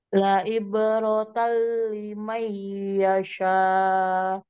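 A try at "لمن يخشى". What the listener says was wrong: Yaksha, bukan yasa, yaksha.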